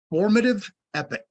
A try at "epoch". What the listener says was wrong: Formative epoch. Not epic, epoch. Epoch. Epoch. It's an epoch. It's an epoch.